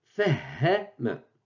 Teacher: C'est le H aspiré de l'anglais, c'est le H prononcé.